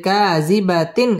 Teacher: ইজহার গুন্না ছাড়া স্পষ্ট করে পড়তে হবে